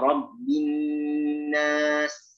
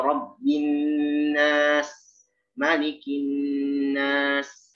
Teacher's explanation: sempurnakan sifat hams dan rokhwah pada huruf sin ya